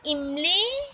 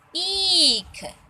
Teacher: इमली का उच्चारण थोड़ा जल्दी हो गया और ईख का उच्चारण थोड़ा लंबा गया